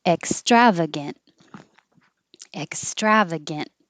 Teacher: Ec, don't release the K. Hold it there.